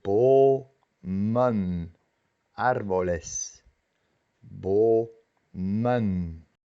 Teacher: La primera sílaba es una sílaba abierta y tiene una vocal, pero se pronuncia doble.